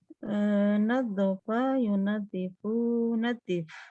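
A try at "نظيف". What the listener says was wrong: Masya Allah.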